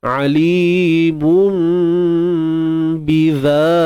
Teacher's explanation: Alimun biza, zal baris atas, za keluarkan sedikit ujung lidah dan panjangkan dua harakat mad asli